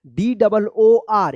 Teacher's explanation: यहाँ पे double O का ओ उच्चारण हो रहा है, यहाँ पे होना चाहिए रूल्स के अनुसार ऊ होना चाहिए, लेकिन यहाँ पे आपको ओ उच्चारण करना है, DOOR, इसको डोर ध्यान रखिएगा, ठीक है?